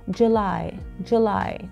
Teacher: اليو بحرف تموز لفظناها كتير كتير كتير خفيفه، يعني كانك عم تنتقل من ال J إلى L مباشرة